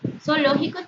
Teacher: Zoológico tiene la unión de dos vocales abiertas y sería el único hiato en esta opción